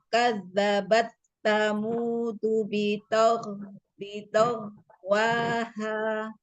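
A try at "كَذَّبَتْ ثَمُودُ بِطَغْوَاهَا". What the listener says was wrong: Kadang-kadang kalau nggak mengalir tuh berarti kurang dibuka sedikit bun ininya rahang. Jadi dia nggak keluar. Coba dibuka.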